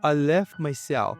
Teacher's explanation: for the word left, if you want to pronounce it, you can drop that T